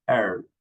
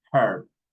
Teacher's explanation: the American people doesn't pronounce the H. British people, they pronounce the H